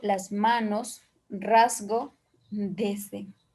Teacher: cuando es Z delante de consonante sonora, es un fricativo. Lingua palatal sonora bililante.